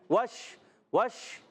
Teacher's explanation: वाऊ कहां से अदा होता है? होठों की गोलाई से।